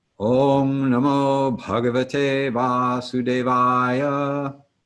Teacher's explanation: So for those of you who are new to Sanskrit diacritical marks, the dot over the M indicates that we close the back of our tongue to the roof of our mouth as we bring our lips together